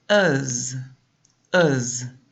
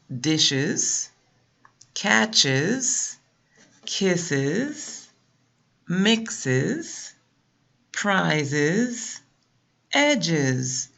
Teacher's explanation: And if you look at the phonetic symbol, you have the schwa and the Z, and the sound is uz, uz. And that sound comes after an SH spelling, CH, S sound, X, Z, and also a GE spelling or DGE spelling.